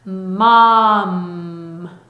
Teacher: 그런데 이걸 아이들한테 가르치면 아이들은 뭐 하고 끝소리를 또 너무 강조하는 경우가 있어요. 그래서 끝에 일부러 힘줘서 뭐 하고 내는 게 아니라 붙어있던 입술이 떨어지면서 나는 소리야